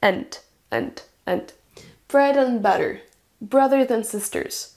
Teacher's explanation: une forme forte, and, et une forme réduite, avec un son schwa